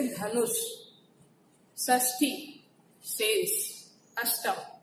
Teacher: मूर्धन्य उच्चारण अर्थात कठोर तालु और कोमल तालु के बीच का जो भाग है वहां पर जीभा जो है आपकी टच होनी चाहिए।